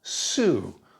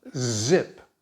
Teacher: Hopefully you can feel vibration. So you can go from S to Z by switching on the sound.